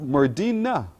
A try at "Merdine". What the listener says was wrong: No, not A. Merdine. It's pronounced